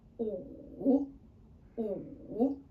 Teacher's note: the tone is our third tone, which is going down first and then up.